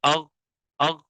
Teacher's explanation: آواز جو ہے وہ مخرج کے اندر قوت کے ساتھ ٹھہری، جس کی وجہ سے ہمارا سانس جو ہے وہ بند ہو جاتا ہے اور آواز میں جو ہے وہ بلندی ہوتی ہے، اسی طریقے